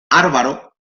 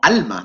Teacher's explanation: Cada vez que haya una L en posición implosiva, en andaluz cae a R